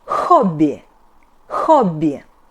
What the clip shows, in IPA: ho'bbee